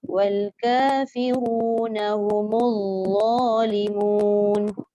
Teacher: dha ni ada sifat rokhawah. Jadi kita tak boleh putus. Bunyi suara tu berpanjangan, bila kita baca ada mati, ada sabdu.